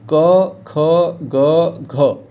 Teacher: और क वर्ग का उच्चारण कंठ से होता है। · क ख ग घ ये सब कहाँ से बोल रहे हैं, कंठ से।